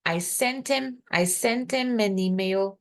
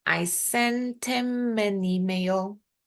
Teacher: Posso juntar o N com o I ou o T com I. Ele, por exemplo, juntou o T.